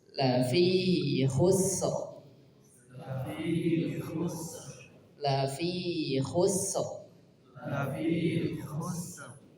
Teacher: Sinnya mengalir, kemudian diakhiri dengan ra tebal.